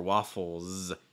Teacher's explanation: Notice that S comes after the L. The L sound is voiced like oh, oh. So that means the S is going to be voiced too. So that means instead of waffles, it's going to be more waffles. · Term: Slight Z sound